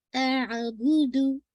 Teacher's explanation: ला अअबुदु, हमजा की फतह वाज़ा करके, ये नहीं कि आपने इसको बहुत जर्क दे दिया अअबुदु, ये नहीं, फिर ये हमजा बन जाएगा। नहीं, हमजा की फतह को वाज़ी कीजिए, अ और फिर आइन, अअबुदु, अब बहुत एग्जैजरेशन नहीं, जैसे आवाज अंदर ही घोट रहे हैं, नहीं, अंदर नहीं घोटनी है आपको, एयर को बाहर, प्रेशर एयर आपने बाहर निकालनी है, ठीक है।